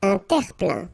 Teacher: Remember this E-I-N nasal. So it goes in your nose and it's un plein, plein.